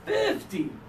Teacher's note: This one is 50 with the strong first syllable